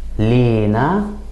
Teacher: in Egyptian, we tend to put some stress on the first syllable and add kind of an E sound